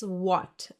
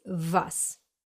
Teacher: Most native English speakers would pronounce this letter as W, but in German it's pronounced as a V, like in the English very or video or van.